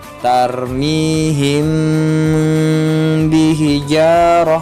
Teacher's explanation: Mimnya dulu diucapkan baru ke samarnya lalu ke ba-nya.